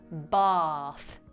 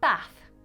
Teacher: For example, people in the south of England say “bath” whereas people in the north pronounce this word with a shortened vowel sound